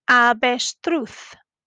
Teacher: in avestruz, the V has a B sound and the Z has a Th sound